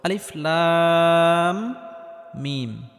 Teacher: শুরুতে আলিফ, এই আলিফটি কোনো টান হবে না। লাম, এখানে লামটি 4 আলিফ পরিমাণ লম্বা করে টানতে হবে, কারণ কোনো হরফের উপর যদি মোটা চিহ্ন থাকে তাহলে সেই হরফটি 4 আলিফ পরিমাণ লম্বা করে টেনে পড়তে হয়।